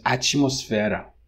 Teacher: Atmosfera, so it would be ati, but then when you have T in Brazilian Portuguese, you palatalize it, and T becomes chi.